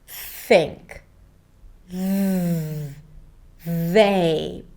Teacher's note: When pronouncing the TH sound, the tip of the tongue comes out and touches the top teeth. This is where the air or voice are blocked, and that's the place of articulation. · the TH is a fricative. That means that the sound is not blocked, the air is not blocked, but it's released gradually. So it's restricted, right?